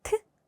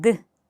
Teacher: 무성음입니다. 자, 트와 짝꿍을 이루는 유성음은 뭐가 있을까요? 똑같은 입모양의 소리만 추가를 하면은 드가 됩니다.